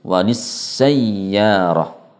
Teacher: Waw dan ya yang berada di tengah-tengah kata ini juga harus dinaber dengan menekan dan diangkat sedikit suaranya